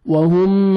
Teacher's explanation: میم ساکن کا اظہار ہے، جلدی پڑھیں گے